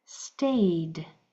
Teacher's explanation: You can feel the vibrations in your vocal cords. So that e d is going to make its voiced sound and sound like a d